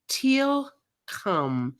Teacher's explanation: when they make the TK sound, it's a farther back, almost toward the back of your throat.